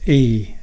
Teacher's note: This vowel is a long vowel, so it is held for twice the length of a short vowel.